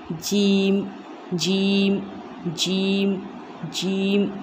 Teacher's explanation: जीम का मखरज है ज़बान का दरमियानी हिस्सा और ऊपर का दरमियानी तालू, यानी ज़ुबान थोड़ी नीचे झुकेगी और जो उसका दरमियानी हिस्सा है, तो दरमियानी हिस्से को अपन ऊपर तालू में लगाएंगे तो उससे अदा होगा जीम।